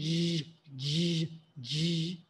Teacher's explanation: that g sound is a voiced sound. We use the vocal cords.